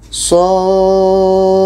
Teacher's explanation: Kita panjangkan 6 harakat baru kita baca qalqalahnya.